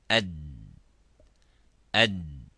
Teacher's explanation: if we pronounce the dal, it stops completely